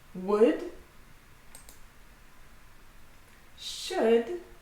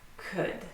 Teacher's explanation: So all of them have a silent L. We do not pronounce the L in any of those words.